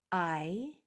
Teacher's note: The long sound for I is the name of the letter, I, and that sound is a diphthong, which means that the sound changes from the beginning of it to the end of it. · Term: long I sound